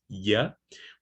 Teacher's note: Palatal, when your tongue gets closer, touch the hard palate, okay? So we have a palatal approximant, ya.